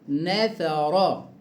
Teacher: الثاء حرف لثوي يخرج من طرف اللسان